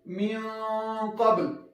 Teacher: دلته چې کومه غنه موږ او تاسو کوو، هغه به ډکه ادا کوو، غنه به ډکه وایو، داسې تفخیم به پکې کوو